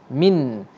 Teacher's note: Bila nun mati diberi tanda mati, bermaksud nun tu akan disebut dengan solid, mana betul-betul bunyi nun.